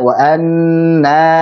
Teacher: saat antum baca wa anna, begitu nanya pendek. Harusnya wa anna na dua harakat.